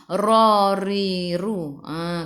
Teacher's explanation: Kena ada getaran ra, dan ra tu kena baca dengan tebal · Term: Tafkhim